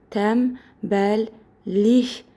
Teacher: N B bilirsiz ki, M B kimi deyilir.